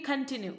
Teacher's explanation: कन के बाद में एक छोटा सा ब्रेक है, फिर टी के बाद में आपका एक छोटा सा ब्रेक है ना, तो ये कंटिन्यू.